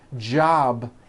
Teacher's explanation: job ends in a B which is a voiced sound